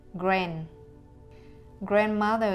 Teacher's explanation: an english word like grandmother has three syllables and the stress is on the first syllable